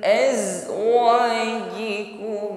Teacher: Azwajikum, desis atau shafir zai-nya menjadi hilang ya. Upayakan shafir ini mengalir ya, nampak ketika mengucapkan zai yang bersukun.